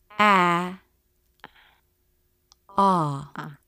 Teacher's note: This is different from the ah as in father vowel, for example, where the tongue presses down in the back and you see more dark space in the mouth